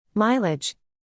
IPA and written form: ˈmaɪ.lɪdʒ (mileage)